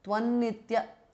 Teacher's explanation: Now, Tvam ends in an Anuswara. The next word starts with Na, Nitya. So, it becomes Tvannitya. Anuswara changes to N.